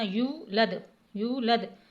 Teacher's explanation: یو کو ایک الف کے برابر یعنی ایک حرکت کے برابر کھینچنا ہے، زبر زیر کی طرح نہیں پڑھنا، یولد، یولد، لم یلد ولم یولد۔